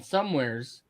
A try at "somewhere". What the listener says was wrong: you know there's not actually an S at the end of that word, right? Somewheres. And that's not actually the correct pronunciation of that. It's just somewhere.